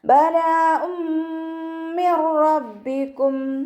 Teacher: നൂൻ സാക്കിനെ നമ്മൾ റോയിലേക്ക് ലയിപ്പിക്കുന്നുണ്ട്, പക്ഷെ മണിക്കാതെ ഉച്ചരിക്കുക · തെൻവീനിനെ മീമിലേക്ക് ലയിപ്പിച്ച ഉന്നയോടുകൂടി ഓതി കൊടുക്കുക. നന്നായി മണിച്ചിട്ട് ഓതി കൊടുക്കുക.